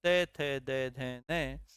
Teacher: त वर्ग का उच्चारण स्थान दंत